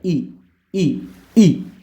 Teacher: ई तालू से बोला जाता है